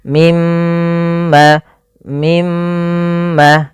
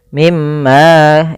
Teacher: Pada lafal mim berharakat tasydid dan di sini diwarnai dengan warna hijau. Artinya kita menahan suara mnya sepanjang dua harakat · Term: ghunah